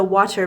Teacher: Americans usually have a soft sound closer to a D than a T